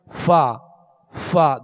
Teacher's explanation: دونوں ہونٹوں کو گول کر کے فا ادا کرتے ہیں جو واو جیسی مشابہت ہوتی ہے